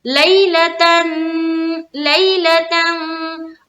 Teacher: यालीन को खींचना नहीं है, यालीन को हम जल्द अदा करते हैं